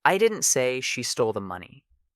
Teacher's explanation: Emphasizing stole suggests maybe she borrowed it or took it another way, but didn't steal it. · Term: stress